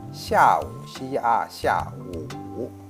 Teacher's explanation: 下 falling tones, 午 falling and rising tones